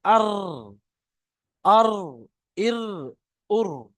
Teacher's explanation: 10 নম্বর মাখরাজ র। জিভের আগার উল্টো পিঠ এবং তার বরাবর উপরে তালুর সাথে লাগিয়ে উচ্চারিত হয় র। যেমন দেখেন আর, জিভের আগার উল্টো পিঠ, জিভের আগা মানে একদম এই ধারের অংশটা, ওর উল্টো পিঠটা উপরের তালুর সাথে লাগবে, লেগে একটা জিভটা যেমন ঘুরলে যেরকম একটা আওয়াজ বের হয়, আর, আর, এই আওয়াজটা আসবে আর, আর, ইর, উর।